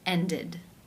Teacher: Therefore, it is case 3, ended, where the ed is pronounced with the I as in sit and the d sound